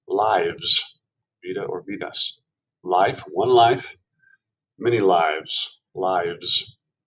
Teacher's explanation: if you pronounce lives with a long I vowel, it becomes the plural of life. Lives, vida or vidas.